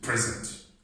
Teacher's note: i want to stress the first syllable